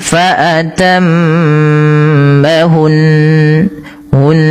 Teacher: Karena di sini nunnya berharakat tasydid ya. Tidak boleh hanya sekedar fatamahun tapi dia harus ada bacaan gunahnya. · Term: gunnah